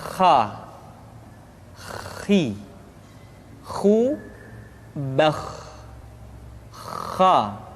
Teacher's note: Kha, pangkal tenggorokan. Diucapkan dengan mengalir nafas. Atau lebih praktisnya, pengucapan huruf kha persis terdengar seperti orang yang tidur dalam keadaan mengorok.